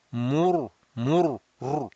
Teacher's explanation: So in both cases, ra will be mufakham, rounded. Mur, mur, rr, raising the back of the tongue.